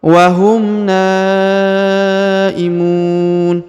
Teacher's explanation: setelah huruf wahum terdapat tanda bacaan panjang 5 harokat ya, maka harus dipanjangkan 5 harokat